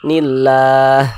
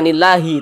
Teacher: huruf H dia tidak dibaca panjang, nah, makanya hurufnya kita sukunkan atau kita matikan. Sehingga kita baca nilah, seperti itu.